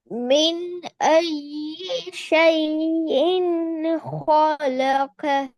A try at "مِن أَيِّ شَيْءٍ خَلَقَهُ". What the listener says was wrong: خلق. ஹா சவுண்ட் வரணும். மின் ஐயி ஷைஇன் خلقه.